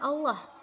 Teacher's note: lafaz jalal didahului oleh huruf berharokat fathah atau dhamma, maka dia menjadi tafkhim, tebal